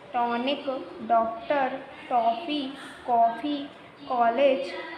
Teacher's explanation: इसका उच्चारण अ और ओ के मध्य होता है।